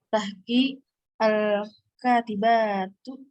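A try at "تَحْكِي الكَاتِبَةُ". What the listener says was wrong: Baknya jangan panjang, jangan dibaca panjang.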